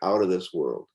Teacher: So of is typically reduced strongly and it becomes an sound. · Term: schwa sound